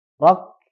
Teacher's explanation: Huruf K punya dua sifat, hamas dan syiddah. Syiddah dulu, kemudian keluarkan hamasnya.